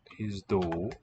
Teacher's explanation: A ZD cluster for the letter zeta